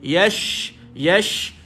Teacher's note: dia ada sifat Hamas juga angin keluar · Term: berhambur